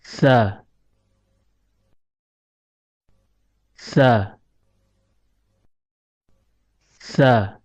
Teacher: Huruf sa keluar dari tempat pertemuan antara ujung lidah dengan ujung gigi seri atas. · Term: huruf tsa, huruf tha